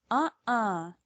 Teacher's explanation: notice how the sound stops for a moment but my mouth doesn't close it's because I'm stopping the sound in my throat this is a glottal stop ah the letter T becomes a